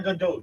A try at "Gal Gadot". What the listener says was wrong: The Gadots can be better. More T at the end.